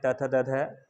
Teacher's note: जीभ हमारे दांत को छूती है वहाँ से बोलते हुए, तो उनका दंत स्थान है